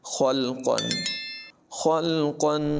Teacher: خا اور قاف دونوں کو پر پڑھنا ہے